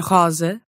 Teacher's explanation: when you see a single S in between two vowels, it's going to sound like a Z, zzz. As in rosa.